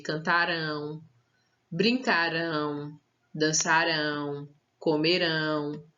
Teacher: quando tiver no futuro e terminar com ão nós vamos dar um som mais forte para essa última sílaba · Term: sílaba tônica